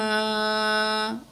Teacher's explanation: الف مد ہے، 2 کاؤنٹ کھینچ کے پڑھیں گے۔